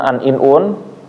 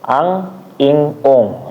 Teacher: Nah, habis itu tanwin an in un itu ada dua cara bacanya. Yang pertama an in un ya. Pakai n biasa. Habis itu ang ing ung ya. Atau ikhfa.